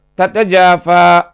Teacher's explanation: நுனி நாக்கு மேல் பற்களின் வேர்பகுதியில் இணையும் பொழுது த உண்டாகும். உதாரணம் தத்தஜாஃபா.